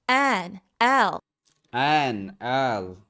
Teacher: Notice how I say N and L. Even in the letter names, I'm stretching out the vowels and I'm shortening the consonants.